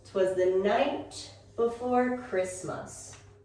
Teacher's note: Christmas is also a noun, so important. So we want to go up in our pitch here.